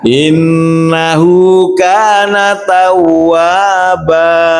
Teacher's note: Dan yang terakhir, yang paling sering terjadi adalah membaca wa dan ba yang terakhir itu dipanjangkan lebih dari 2 harokat.